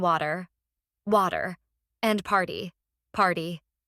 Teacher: Americans have something called a t flap where the t softens into a d sound.